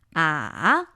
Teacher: the third tone is supposed to be a 214